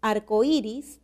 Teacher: arcoiris presenta como un hiato acentual suena más la vocal cerrada que la vocal abierta